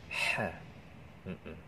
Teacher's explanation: tempat keluarnya huruf ha adalah tenggorokan bagian tengah ya